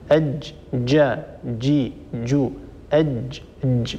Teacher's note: الجيم هي حرف شديد ينحبس الصوت عند النطق به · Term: جيم شديدة